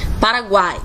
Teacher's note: O A está com um som sobressaindo, está com um som mais forte em relação ao U e o I. E, sendo assim, nós temos uma semivogal, uma vogal e outra semivogal. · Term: tritongo